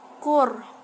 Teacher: Kemudian ada kur, kurnya dibaca ro tafhim karena ro sukun didahului dengan harokat domah.